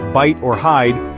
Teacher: it's actually a combination of two vowel sounds pronounced in quick succession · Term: dip thong sound